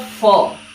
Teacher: is a labiodental fricative, and its voicing condition is voiceless